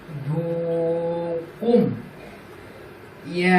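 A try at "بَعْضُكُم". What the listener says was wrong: কুম কেন বলতেছো? এখানে মিম সাকিনের পর হরফটা কি? বা না, অর্থাৎ গুণা হবে।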